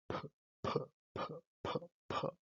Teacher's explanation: Los dos sonidos son orales porque el aire escapa por la boca. El sonido p es sordo porque no hay vibración de las cuerdas vocales